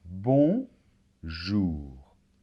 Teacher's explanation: très commun que deux lettres s'assemblent pour former un sont ici il s'agit de la voyelle nasale on s'est un peu comme un os mais c'est ça vibre plus